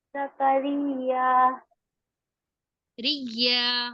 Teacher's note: بسم اللہ الرحمن الرحیم فتقبلها ربها بقبول حسن وأنبتها نباتا حسنا وكفلها زكريا زکریا ریا. ریا دیکھیے تشدید لگی ہوئی ہے نا، تو ایک بار را کے ساتھ یا پڑھی جائے گی، دوبارہ یا پڑھی جائے گی